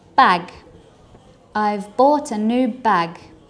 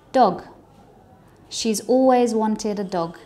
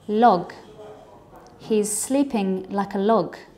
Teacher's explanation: your mouth is in exactly the same shape as when you say the k ending sound. However, this time it is voiced. One way to know whether you're making a voiced sound or not is to put your fingers on your throat, and if you feel a vibration, then you know that it is a voiced sound. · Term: g ending sound